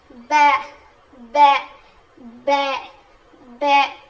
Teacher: ब जो है दोनों होठों के गीले हिस्से से अदा होता है। मतलब हमारे जो होठ है उसका जो अंदर का हिस्सा है जो हमेशा गीला रहता है उन दोनों के मिलने से यानी ऊपर का गीला हिस्सा नीचे का गीला हिस्सा वो दो होठों के जो दो गीले हिस्से मिलते हैं तो ब अदा होता है।